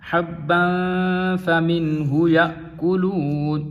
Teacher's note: یا کے آگے الف اور الف کے اوپر جزم ہے تو یہ حمزہ بن جائے گا، تو ہم اسے جھٹکے کے ساتھ پڑھیں گے۔